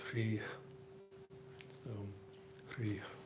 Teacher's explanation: in the original Sanskrit, it has a little puff of air at the end